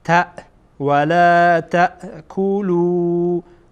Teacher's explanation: اینجا تا که میبینید همزه داره و از انتهای حلق ادا میشه. تا تارهای صوتی کاملا میبندین